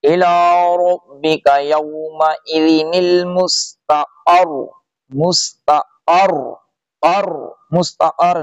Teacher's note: قاف کو سختی سے را سے ملائیں گے، پیش کو چھوڑ دیں گے۔